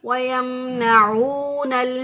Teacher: میم ساکن کی آواز کو ظاہر کرتے ہوئے پڑھیں گے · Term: اظہار شفوی